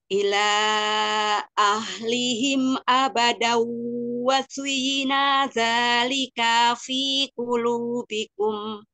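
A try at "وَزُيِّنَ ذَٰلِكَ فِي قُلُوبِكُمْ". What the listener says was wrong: Wazuyyina dzalika fi qulubikum. Na dan ka jangan dipanjangkan, satu harokat.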